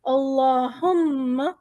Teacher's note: اگر میں وقف نہیں کرتی اللہم، میم پہ ہماری تشدید ہے، اسے ہمیں وزن دینا ہے، ناک میں آواز کو گھمانا ہے، پھر آگے بڑھنا ہے۔